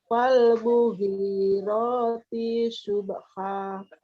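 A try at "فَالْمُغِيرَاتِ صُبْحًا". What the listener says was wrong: T-nya satu. T langsung pindah ke su. Su. Fal Fal mughirati subha. Fal mughirati su. Subha.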